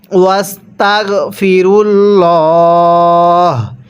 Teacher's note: আল্লাহ শব্দের এই লামটাকে আমরা মোটা করে পড়ব, অর্থাৎ পোর করে পড়ব।